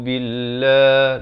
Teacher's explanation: lafz jalalah dibaca nipis 2 harakat